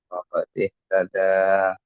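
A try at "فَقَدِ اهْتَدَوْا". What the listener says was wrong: Faqad ihtadaw. Faqad ihtadaw ya. Wawnya sukun.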